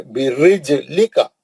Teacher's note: جیم ساکن ہے، جیم پہ جزم ہے، خلخلہ کریں گے